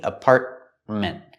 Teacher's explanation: The first T in the middle is a stop T.